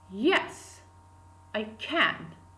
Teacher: I is unstressed, or it is marked by dot at the lowest part of our diagram, and can is pronounced with the second falling tone